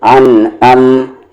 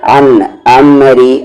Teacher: عین کا مخرج مڈل تھروٹ، حمزے کا مخرج باٹم تھروٹ یعنی نیچے والا حلق